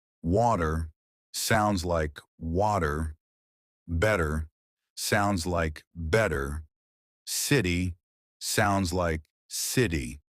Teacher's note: One, the T that disappears. Americans love to soften or remove the T sound.